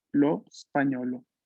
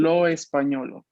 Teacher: Hay que aprender a que cuando no hay E delante de la S, pues la primera que se pronuncia es la S